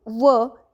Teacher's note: दंतोष्ठ म्हणजेच दात आणि ओठ, ज्यामध्ये व हे एकटं व्यंजन येतं